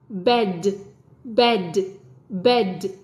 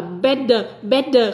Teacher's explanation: cái âm d d Con chỉ bật ra một chút xíu